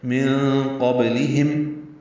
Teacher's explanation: من قبلہم، نون ساکن کی بعد قاف آنے کی وجہ سے اخفا ہے، نون کی آواز چھپائیں گے، قاف پر پڑھیں گے، با ساکن پہ قلقلہ ہوگا، لام باریک پڑھا جائے گا، ہم میں میم ساکن پہ اظہار شفوی ہے، من قبلہم، ہم یہ قلقلہ نہ ہو، میم ہلے نہیں۔